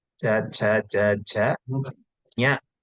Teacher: The tongue should touch the palate completely. Say, when you are telling cha, cha, cha, ja, the penultimate part of the tongue touches the palate